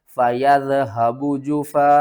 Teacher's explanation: تو ہم کیا کریں گے، جفا، اس مد کا نام ہے مد متصل، اس کو ہم بڑی مد کہتے ہیں، اور 5 الف کے برابر آپ نے اسے کھینچ کر پڑھنا ہے